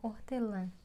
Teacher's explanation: Parte do ar que sai, quando a gente fala, quando a gente pronuncia a vogal, sai pelo nariz. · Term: nasalização